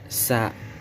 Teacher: Ujung lidah berada pada halaman dua gigi seri bawah sehingga keluar sa atau sin keluar di antara dua gigi seri dan bawah, hurufnya sin.